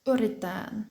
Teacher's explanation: The double T here changes to one T.